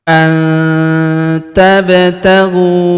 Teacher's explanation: Huruf ba berharakat sukun kita pantulkan atau kita qalqalahkan.